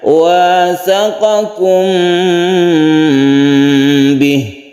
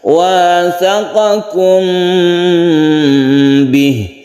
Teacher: Kalau kita lihat mim mati ya berbunyi m, tidak berubah. Itu karena mim dan ba ini makhrajnya atau tempat keluarnya itu sama, yaitu di bibir. Makanya disebut syafawi. · Syafawi itu mim itu makhrajnya di bibir. Sehingga ketika kita membaca mim, kita bersiap membaca ba, dan ikhfa itu didengungkan atau dipanjangkan. Jadi membacanya wasaqakum bih, ditahan dulu ini panjangnya. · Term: ikhfa syafawi